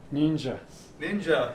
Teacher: d plus y will become ja as in ninja ninja